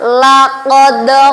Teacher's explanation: cara membacanya dengan samar dan mendengung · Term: Ifa Hakiki